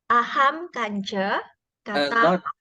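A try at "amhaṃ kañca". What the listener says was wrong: Not ahang kancha. There's no ahang here. Now ahang is something like this. This is ahang. But you see here, amha.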